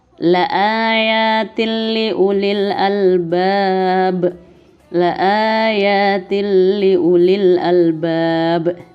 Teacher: kasrah tanwin bertemu dengan huruf lam maka hukum bacaannya adalah idgham bilagunnah ya idgham bilagunnah ini hurufnya ada dua yaitu Rock dan lam